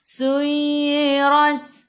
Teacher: Ta sifat hurufnya sifat hurufnya hamas, kena ada sedikit sahaja angin, jangan banyak